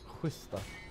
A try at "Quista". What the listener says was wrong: What do you try to do? There's no H there. There's no G there. Quista.